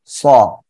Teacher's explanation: এই যে সদ জবর কি স দুই ঠোঁটটা হালকা গোল হবে আর আওয়াজটা মোটা হবে